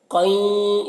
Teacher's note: اور دیکھیے تنوین کے بعد یہاں پر یا ہے حروف یومن میں سے، تو تنوین کو یا سے ملا کر غنہ کے ساتھ پڑھیں گے، اس کو ادغام ناقص کہتے ہیں